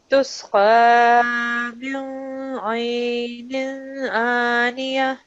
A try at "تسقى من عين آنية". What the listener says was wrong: No, make a full nasal sound. Don't say mil. Don't make a nasal sound. Make a noon sound.